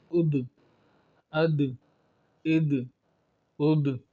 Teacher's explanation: کلکلہ خوب ہو کے ظاہر ہو رہا ہے، بہت زیادہ پتہ چل رہا ہے کہ یہاں یہ جو لفظ ہے یہ حروف کلکلہ میں سے ہے.